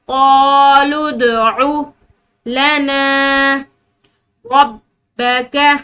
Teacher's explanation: دال حروف قلقلہ میں سے ہے، ٹھیک ہے، تو یہاں پر اس کو ہلاتے ہوئے پڑھیں گے